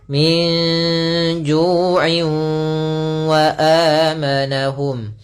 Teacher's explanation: tidak secara utuh diidgamkannya masih ada sedikit menyisakan suara nunnya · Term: idgham naqis